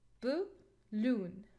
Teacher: Here the schwa sound. We cannot stress schwa sound or the syllable, the weak syllable, so we put the stress on the second syllable.